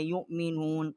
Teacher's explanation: الٹا پیش ہے ایک الف جتنا آواز بلند کی ہے یؤمنون واو کے اوپر حمزہ ہے اور ہم نے اس کو جھٹکے کے ساتھ حمزے کا جو مخرج ہے اس کو نکالا ہے